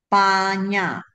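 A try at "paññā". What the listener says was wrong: Yeah, you must pause at the double N. Double consonant. That is supposed to be guttural lah, with your tongue and the palate there lah.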